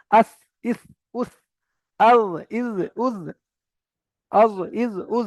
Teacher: সা জাল জ উচ্চারিত হয় জিভের আগা সামনের উপরে দুই দাঁতের আগার সঙ্গে লাগিয়ে